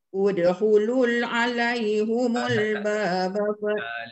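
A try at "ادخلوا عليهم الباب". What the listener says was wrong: Lu tu tak ada lam. Udkhulu itu waw mat. Dia tak ada lam selepas tu. Jangan tambah lam. Udkhulu alu, dia tak ada lam selepas tu. Ada waw je. Udkhulu alai.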